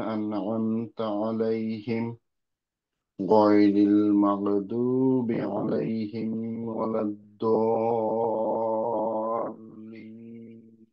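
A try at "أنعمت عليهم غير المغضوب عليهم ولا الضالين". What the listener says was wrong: আহ, ছোট ছোট কয়েকটা জিনিস, মেইন যে জিনিস দুইটা ফিক্স করতে হবে সেটা হচ্ছে আইনের মাখরাজ আর র এর তাক- তাক- তাকরীরটা হচ্ছে না, কিন্তু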